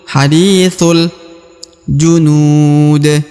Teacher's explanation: Huruf nu dibaca panjang ya, junud ya, 2 atau 4 harokat ya, karena terdapat waw sukun sebelum huruf pemberhentian ya. · Huruf thu, ini huruf thu dibaca langsung masuk ke huruf lam ya. Alif yang di sini tidak dibaca ya, langsung masuk ke huruf lam yang sukun.